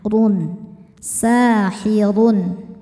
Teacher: Cara bacanya panjang 2 harokat. Sahirun, huruf ra dibaca tafkhim karena berharokat dhammah tanwin, harokatnya di atas. Maka ra-nya ditebalkan